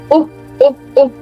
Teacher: for this sound, your lips are supposed to be neutral. Oo, it's a short sound. It's the shorter version of number nine.